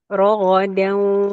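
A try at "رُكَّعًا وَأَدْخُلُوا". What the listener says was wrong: Suaranya dapetin lagi wawunya yang di bibir.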